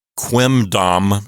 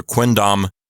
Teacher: with the letter N you don't have to put your lips together your lips can stay apart and they're ready to say the letter d right after that